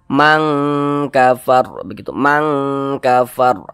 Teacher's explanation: Nah, akan tetapi dia kadar ikhfanya itu ya, kadar samarnya itu dia rendah, lebih tinggi kadar dengungnya, maka dia lebih condong berbunyi eng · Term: ikhfa hakiki ab'ad